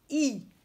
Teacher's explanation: tu dis I en tendant bien les commissures des lèvres. Ça veut dire en écartant les petits coins du côté.